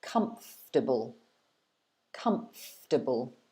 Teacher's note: so you're stressing the first one and you're separating into three parts